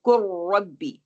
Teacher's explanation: लाम को हम इग्नोर कर रहे हैं। काफ को रा से मिला रहे हैं। रा के ऊपर शद होगी। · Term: इदगाम कामिल